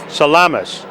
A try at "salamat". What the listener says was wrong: Salamat with a T.